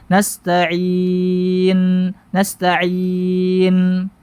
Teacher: Nun punya sifat tawasud ya tidak berhenti seketika suaranya tidak juga terlalu berlebihan dalam mengalir · Kemudian menghilangkan sifat tawassut, suara pertengahan antara syiddah dengan rokhawah, tidak terlalu mengalir dan tidak juga seketika berhenti suaranya. Nah, nun punya sifat tawassut, ya, tidak berhenti seketika suaranya, tidak juga terlalu berlebihan dalam mengalir